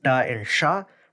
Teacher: retroflex da and sha, present in Southern Vietnamese